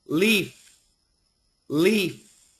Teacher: make sure that f is very long and the L is clear